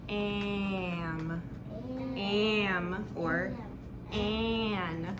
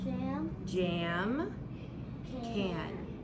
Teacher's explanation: When the M is next to it or the N is next to it, we have the whiny baby A.